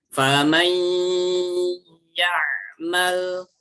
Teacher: ketukan yang pertama itu masuk ke dalam hurufnya. Kemudian 2 ketukan berikutnya itu baru menyempurnakan gunnahnya atau bacaan dengungnya